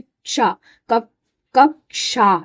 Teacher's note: इसमें क और श मिला इसलिए इसकी साउंड में भी क और श की आवाज आती है।